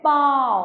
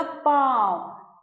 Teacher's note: थोड़ा सा नाक से आवाज आती है आ की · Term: चंद्र बिंदु